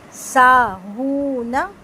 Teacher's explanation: اس میں نون لمبا نہیں ہوگا کیونکہ نون صرف سنگل حرکت ہے, الف مد نہیں ہے.